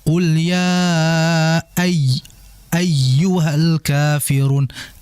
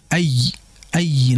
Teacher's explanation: Ay ayy langsung dihentak di situ ya. Jadi meninggi suaranya karena di situ ada tasydid. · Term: annabr